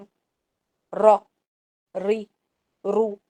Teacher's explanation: 2 دفعہ زبان کے ہلنے کے ٹکرانے کی آواز آتی ہے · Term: پرفیکٹ را